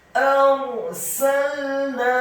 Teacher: Kata arsalna, alifnya dibaca tipis, fathah 1 harokat, ra-nya dibaca sukun, isti'la wa tafkhim, bergetar dan tebal. Huruf ra yang sukun dibaca tafkhim tebal karena sebelum huruf ra ada huruf alif yang harokatnya fathah.